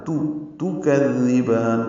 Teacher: کذبان کاف کو نرمی سے پڑھیں گے، زال سے ملائیں گے، زال کو نرمی سے پڑھیں گے، زبان کی نوک سامنے کے دانتوں کے اندرونی کناروں سے لگائیں گے